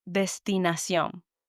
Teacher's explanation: So I know that sion, last syllable of the word, needs to have the strongest emphasis. And I pronounce all the word as it's written, doesn't change.